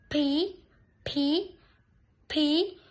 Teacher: Các muốn đọc đúng thì các em phải bật thật mạnh để cái tờ giấy nó rung · Đối với âm phí, phí, phí, mình cần lưu ý là môi mím giống như âm b. Rồi sau đó mình bật ra